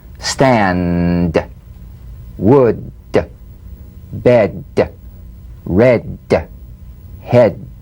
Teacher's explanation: Be sure you feel vocal cord vibration, lots of vibration in the tongue.